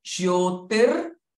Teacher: Ja and ya are joined together, so both the sounds should articulate. Jyo. Jyotir.